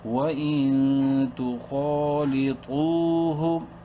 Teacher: نون ساکن کے بعد تا حروف حلقی میں سے نہیں ہے، اخفا کریں گے اس نون میں